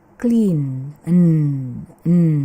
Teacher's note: ketika kita membaca N-nya N itu kita merasakan ada getaran di tenggorokan. Berarti N ini adalah voice sound.